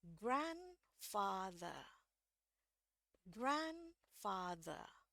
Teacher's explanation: saya putuskan R di sini tidak bunyi karena fiturnya British English itu R itu bunyi kalau bunyi selanjutnya adalah vowel. Karena kita nggak tahu ya ini di belakangnya apa, maka di sini R-nya tidak saya bunyikan.